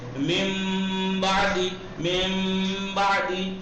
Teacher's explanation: اور اگر نون ساکن کے بعد بے آ جائے تو اقلاب ہوگا، یعنی نون کو میم سے بدل کے پڑھیں گے